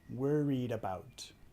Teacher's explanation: Vinculando la D y la A.